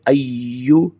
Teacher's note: या अय्यू, या के ऊपर अय्यू के ऊपर थोड़ा सा जोर देना है। अय्यो नहीं पढ़ना बल्कि अय्यू थोड़ा सा जोर देना है, तशदीद है